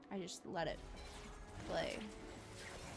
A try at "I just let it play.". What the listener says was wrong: You realize the way you said that was not very much indicative of a question. You sound so monotone, it's like you're saying a statement.